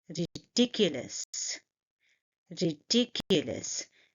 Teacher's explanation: And you see that I'm stressing on the second syllable.